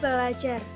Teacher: Perubahan fonem r pada prefik ber menjadi fonem l